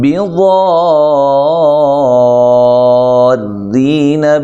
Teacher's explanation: ضاد کو موٹا ادا کرنا ہے، خوب اس کے مخرج سے نکالنا ہے